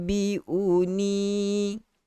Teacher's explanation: U tu kena panjang sebab kedudukan dia sebelum huruf waw. Jadi waw itu adalah waw mat.